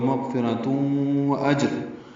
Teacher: جیم ساکن پہ قلقلہ ہے، حمزہ اقصی حلق سے ادا کریں گے اور جیم سے ملائیں گے. راپور پڑھیں گے اور تنوین کے بعد کاف آنے کی وجہ سے اخفاء ہوگا.